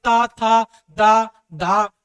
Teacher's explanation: आपकी जीभ किस में स्पर्श हो रही है? दांतों में स्पर्श हो रही है।